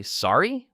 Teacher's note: Or when you didn't hear something clearly, you might say, Sorry? with a rising intonation.